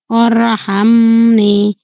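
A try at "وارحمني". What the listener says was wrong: ওয়ারহামনি, নি না, ওয়ারহামনি না, ওয়ারহামনি একটু টেনে বলেন।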